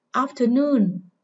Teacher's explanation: Âm tiết thứ 3 nhận trọng âm chính, âm giữa không nhận trọng âm và âm đầu là trọng âm phụ